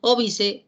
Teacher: Óbice, acento en la antepenúltima sílaba, la palabra es esdrújula.